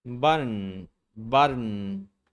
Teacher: And notice how the T consonant changes to a stop T. The vowel is omitted, and then you move directly from the stop T to a syllabic N consonant. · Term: stop T plus syllabic N